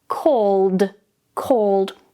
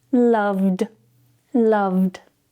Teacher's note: So the ED doesn't become id, called becomes a d sound.